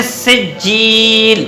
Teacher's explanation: 2 زیر ہیں. تو دونوں زیر گرا دیں گے حالت وقف میں